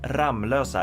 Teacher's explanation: Losa which would make sense because there's only one M but it's actually pronounced Ram Losa as if it were two M's in there